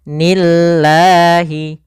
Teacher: lafal Allah bila didahului dengan kasrah maka lafal lamnya tipis, bukan nillahi, tapi dia nil al nillahi nillahi alla, maka kalau di sini nillahi.